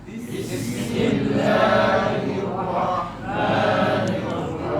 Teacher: Sebab tu masa kita sebut rahmah, jangan terus bismillahirrahmanirrahim. Bagi angin ha tu jelas dulu. Jadi rahmah, bagi lama sikit. Rahmah dengan angin si lama.